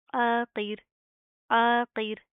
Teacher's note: आइन की आवाज़ को आपने प्रॉपर वाज़ह करना, साथ का अलिफ भी पढ़ा जाएगा। क़ाफ को ज़ेर के साथ भी प्रॉपर मोटा पढ़ेंगे